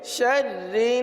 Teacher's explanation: را کو پر نہیں پڑھیں گے، را کو باریک پڑھیں گے